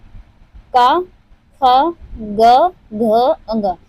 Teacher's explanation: क वर्ग जितने हैं क वर्ग जितने हैं वह सब कंठ से उच्चारित होते हैं।